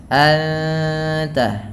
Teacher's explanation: Kemudian anta ada ikhfa hakiki, suara nunnya disamarkan kepada huruf ta dan ditahan bunyi dengungannya